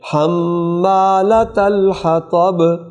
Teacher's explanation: یہاں طاء کو پر کریں